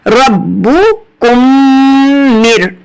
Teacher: میم کے بعد میم مشدد ہے تو ہمیں کیا کرنا ہے، ہمیں ادغام شفوی کرنا ہے غنہ کے ساتھ